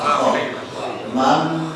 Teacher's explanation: Bakhila harus ada ngoroknya biar tidak keliru dengan ha